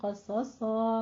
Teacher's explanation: क़स और सा में क़ौफ भी पुर है, सौद दोनों जगहों पे पुर पढ़ा जाएगा। सौद में सीटी की आवाज़ भी साथ में, क्योंकि वो हुरूफ सफ़ीरिया में से है, तो सीटी की आवाज़ कायम रखिएगा।